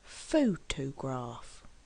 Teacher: photograph has three syllables and we actually stress on the first syllable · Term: word stress